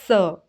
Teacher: स बोलेंगे तो जो हमारी जीभ है वो दंत मूल दांतों का जो मूल स्थान जहां से दांत निकलते हैं वहां पे स्पर्श करती है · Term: वर्तस्य